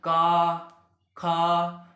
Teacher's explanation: कंठ से आवाज आ रही है ना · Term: कंठ ध्वनियां